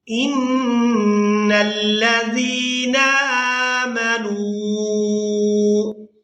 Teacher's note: نون مشدد پر غنہ کریں گے، اس کے بعد زال کو نرمی کے ساتھ ادا کرتے ہوئے یائے مدہ کی وجہ سے کھینچ کر ادا کریں گے۔